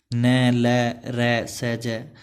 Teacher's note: इनके उच्चारण में दांतों का अंदर का मसूड़ा छू जाता है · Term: वर्तस्य